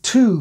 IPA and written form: tʉw (to)